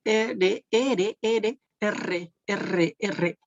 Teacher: la denominación de vibrante viene de la vibración del ápice de la lengua